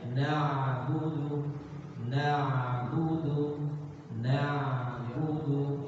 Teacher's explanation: Jadi nggak boleh na'budu berubah ke hamzah. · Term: ain